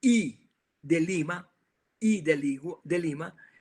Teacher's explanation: cuando hablamos de la I de Lima, I de Lima, realmente las comisuras de los labios tienden a abrirse hacia los lados